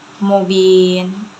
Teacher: mubin itu mad arid disukun karena mad tabi'i di akhir kalimat, cara bacanya panjang 2 harokat